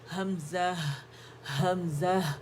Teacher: ان کے اس کی جو آواز ہے حمزہ کی ساؤنڈ ہے، اقصى الحلق سے جب نکلتی ساؤنڈ ہے